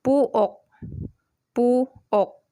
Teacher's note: When the aspirated kyok is in the final position, the sound value will be K, letter K only.